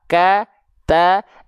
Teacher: huruf Kaf dan Ta Ka Ta itu dia hanya berupa percikan-percikan nafas saja